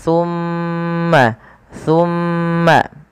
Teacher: ketika kita membaca huruf-huruf yang berharakat tasdid terkhusus mim atau Nun tasdid itu wajib ditahan suara